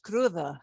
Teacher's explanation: that d will sound like a th